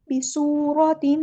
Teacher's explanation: अलिफ के बराबर लंबा करना है, मद असली हो रही है, रा हमारा यहाँ हैवी लेटर है, रा पर ज़बर आई है तो पुर पढ़ेंगे